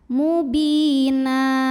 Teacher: baris tanwin fathah ini jadi fathah saja jadi 1 dan diganti dengan panjang 2 harokat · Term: mad iwad